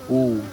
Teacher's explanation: The lips begin to round. The back of the mouth opens while the front constricts. This is the first labial involvement in the vowel sequence, the first time the lips actively participate in shaping the air. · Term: Short U